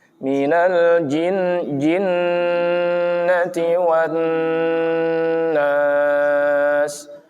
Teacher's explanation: Minal jin, usahakan jangan sampai keluar angin. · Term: huruf jim